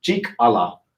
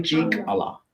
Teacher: I hear people say the name of our school and they don't make that glottal stop.